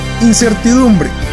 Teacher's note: la palabra incertidumbre lleva el acento en la penúltima sílaba